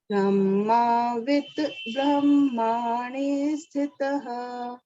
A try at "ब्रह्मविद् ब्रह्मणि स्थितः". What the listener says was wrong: ब्रह्मविद् ब्रह्मणि ब्रह्माविद् और ब्रह्माणि नहीं ब्रह्म ब्रह्मविद् ब्रह्मणि स्थितः